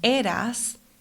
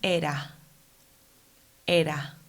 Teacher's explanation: the realization of aspirated S as H at the end of a syllable or before a consonant is a distinctive feature in the Caribbean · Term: aspiration of the S sound